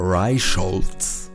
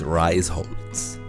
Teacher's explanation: sh is actually not a combination of letters it is the border between two syllables